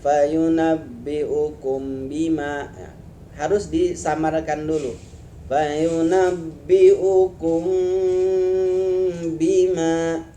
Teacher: ikhfa syafawi, yaitu mim mati bertemu ba.